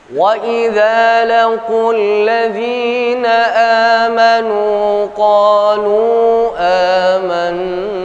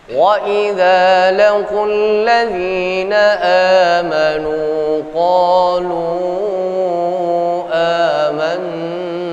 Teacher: Pada awal saya membaca gunakan 2 harokat. Yang kedua saya gunakan 4 harokat. Yang ketiga saya bacanya dengan 3 alif atau 6 harokat. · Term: jaiz munfasil